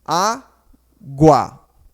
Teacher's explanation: o u é sonoro eu escuto som da letra U então aqui é ditongo